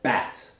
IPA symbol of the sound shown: æ